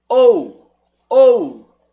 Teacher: O U sumiu. Você mal pronuncia o U.